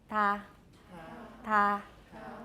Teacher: Let's make it dental with the tip of the tongue.